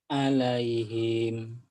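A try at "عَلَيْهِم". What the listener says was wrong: alaihim. Himnya pendek Mas. Alaihim. Jangan ketahan. alaihim. Kosar ya. Ujungnya nggak ada panjang. Alaihim.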